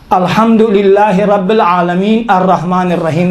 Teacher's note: عالمین تو وقف ہے، آپ نے وقف نہیں کیا، وقف کے جگہ میں ملا کر پڑھا آپ نے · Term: وقف مع الاتصال